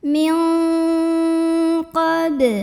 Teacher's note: cara baca nun sukunnya ini adalah samar-samar menuju huruf qaf disertai dengungan dan dengungannya besar ya. Karena qaf makhrajnya jauh dari nun. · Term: ikhfa